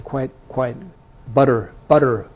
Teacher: People would say quite butter with a d instead of a t.